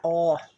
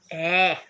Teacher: O acento agudo deixa o som da sílaba mais forte da palavra bem aberto